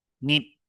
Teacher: High tone here. Notice the ending is not long, it's short. Nit, so it cannot be a normal tone.